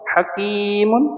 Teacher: کی کو ایک الف کے برابر کھینچنا ہے کیونکہ یا مدہ ہے، یا کے اوپر جزم ہے یا ساکن ہے اور اس سے پہلے زیر ہے، تو اس کاف کو ہم کھینچ کر پڑھیں گے ایک الف کے برابر.